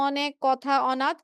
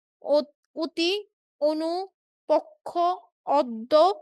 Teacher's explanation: অ, ও একটা সাধারণ আরেকটা হচ্ছে পাশের ধ্বনির প্রভাবে কখনো ও এর মতো উচ্চারিত হয়। হ্যাঁ, যখন ও এর মতো উচ্চারিত হয় তখন সেটাকে সংবৃত বলে।